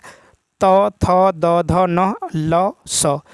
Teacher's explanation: दंत से यानी दंत वर्ण है